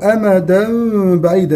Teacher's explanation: تنوين بالفتح في أمدا مقلب إلى ميم ثم تخفى الميم عند ملاقاتها الباء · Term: حكم الإقلاب